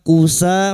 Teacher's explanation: Kusa fathah diikuti alif 2 harakat mad tabi'i